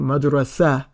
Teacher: Because we see the A at the end, we know that that A really represents the ta marbuta, because you end up saying madrasa, yeah, with that little ha, that little weak ha at the end. Okay, and that's what that A represents.